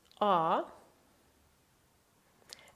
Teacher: The sound is like A in the English word car, so it's a long vowel